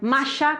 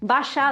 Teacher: el yeísmo es precisamente esa no diferenciación entre los sonidos de la Y o Y y de la doble L